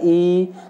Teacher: थोड़ा सा देर तक बोला जाएगा ई, तो ये ऑटोमेटिक छोटा ई बड़ी ई में कन्वर्ट हो जाएगा